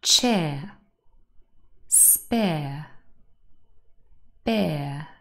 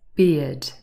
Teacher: it contains the diphthong ear not air